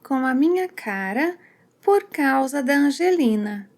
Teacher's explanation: doesn't say com a, but he shortens it to ca